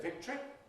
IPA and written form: ˈvɪktri (victory)